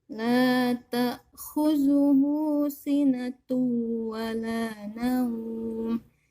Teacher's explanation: Ini ada waw bertasdid, jadi cara bacanya nggak boleh sinatu, jadi harus dimasukkan ke dalam huruf waw, sinatu gitu ya. Ada tasdid dan dimasukkan ke dalam huruf waw.